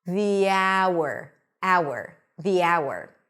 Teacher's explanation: the H is not pronounced and we're actually starting with a vowel